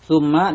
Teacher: Summa di sini idgham, summa di sini dibaca mendengung dinamakan gunnah musyaddadah karena mim bersidah